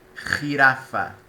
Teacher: A letra J, na língua espanhola, tem uma pronúncia diferente do português. Se pronuncia bem vibrante na garganta